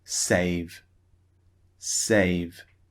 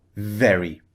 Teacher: very V is at the beginning so the sound is strong when the V sound is at the end of a word for example save the sound is not as forceful not as strong it's the same sound but we don't produce as much force